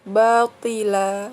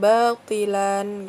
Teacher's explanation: Nah, hukum bacanya adalah mat iwad ya, karena fathah tanwin bertemu dengan alif ya di akhir kalimat. Jadi tanwinnya tidak dibaca. Jadi dibacanya batila, bukan batilan gitu.